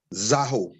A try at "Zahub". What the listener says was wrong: Zahu with a B. No, Zahub, H-U-B, Hub.